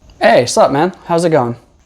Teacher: It's usually just what's up? Or sometimes there's no what, no W at all, and it's just sup.